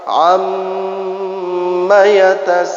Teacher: nun tasydid dan mim tasydid. Ini namanya huruf-huruf yang keluar daripada pangkal hidung